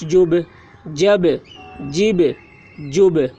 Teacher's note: یہ با میں قلقلہ ہو رہا ہے، با میں آواز ٹکرا رہی ہے۔